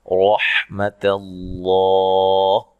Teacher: را کو موٹا پڑھنا ہے، تا کو باریک، لفظ اللہ کو موٹا ادا کریں گے